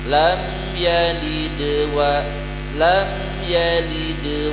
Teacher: Yang terakhir baru lad, karena yang depan qalqalah sugro, yang belakang qalqalah kubro. Qalqalah sugro kalau ditekan kuat jadi qalqalah kubro, resikonya memutus kalimat, memutus kayat.